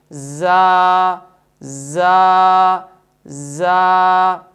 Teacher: صفت استفعال اور انفتاح کی وجہ سے اس حرف کو خوب باریک ادا کریں گے